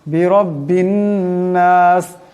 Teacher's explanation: রার উপর জবর আছে, এর আগে মোটা করিয়া পড়তে হবে। বিরব্বিন এই বা এই নুনকে ধরবে, নুনের উপর তসদিদ আছে, নুন মুশাদ্দাদের একারে পরিমাণ গুণনা হবে।